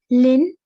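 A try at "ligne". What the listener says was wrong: very good, Lin.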